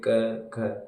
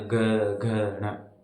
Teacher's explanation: जब बोलते हैं क ख, तो इनमें कोई कंपन नहीं होता, लेकिन उसके बाद जो आगे के तीन अक्षर है ना उनका उच्चारण करते हैं ना, घ घ न, उनमें घर्षण उत्पन्न होता है। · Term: अघोष